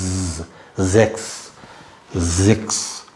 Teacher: எஸ் வந்து ஒரு தேனீக்கள் ரிங்கார மாதிரிதான் நம்ம சொல்லணும் இஸ் இஸ் சொல்லக்கூடாது